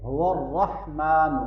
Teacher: ہا کو اچھی طرح سے گلے کے درمیان سے ادا کرنا